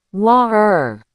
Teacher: It's computer. But wait, if you cross over to London, that T doesn't become a D. Sometimes, it disappears entirely. It becomes a glottal stop.